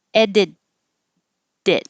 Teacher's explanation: The T in edit will change to a D, and the T in it just holds there, it, unless there's a vowel after it.